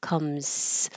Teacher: You can start losing your voicing and it changes to back to an S. Comes. So comes to the end.